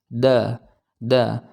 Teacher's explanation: Nah, huruf dal ini dia mempunyai sandaran, yaitu ketika kita ucapkan ujung lidah kita, ya, ujung lidah kita ini menempel dengan pangkal gigi seri atas. Nah, dia mempunyai sandaran ketika keluar, ketika diucapkan, ya, da, maka akan kita rasakan bahwa huruf dal ini, ya, ada atau cara mengucapkannya dengan menempelkan ujung lidah dengan pangkal gigi seri atas, ya.